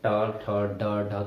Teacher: टा वर्ग पूरा मूर्धा से उच्चारित होता है